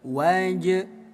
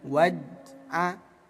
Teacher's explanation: kita baca pantul ya disebut qalqalah. Waj waj tambahkan bunyi e waj.